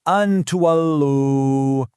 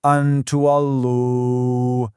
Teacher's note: So, instead of a hard, clear an, your tongue gets ready for the taa, but it doesn't quite touch the roof of your mouth. The sound just hangs there for a second with a light nasal hum.